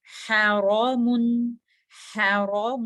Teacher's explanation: را ہیوی ہے، back of the ٹنگ اپ ہو جائے گی